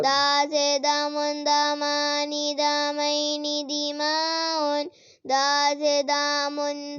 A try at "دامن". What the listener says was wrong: دا لمبا نہیں نہ کرنا